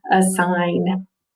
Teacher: it's a schwa sound with a long eye